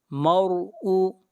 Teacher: را کو موٹا پڑھیں گے، را سے پہلے زبر ہے